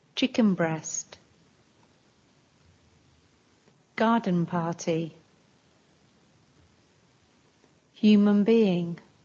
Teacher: sometimes n sounds more like M